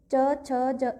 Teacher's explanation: जो हमारी जीभ है वो एक तरीके से नीचे रखी रहेगी और तालू में ऊपर वहां से टच होगी हल्की सी पीछे से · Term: च वर्ग